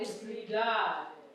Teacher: I don't want you to lengthen the last syllable, but the penultimate, the one before it.